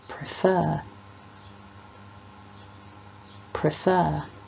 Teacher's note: we need to stress the second syllable of a word like prefer